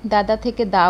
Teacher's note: দুটো সমবর্ণের ব্যঞ্জনধ্বনি থেকে যদি একটি লোপ পায়, তাহলে সেটা কি হচ্ছে? ব্যঞ্জনচ্যুতি।